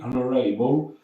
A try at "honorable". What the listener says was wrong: No H devi mangiare, non c'è H pronuncia. Non no. Honorable, no.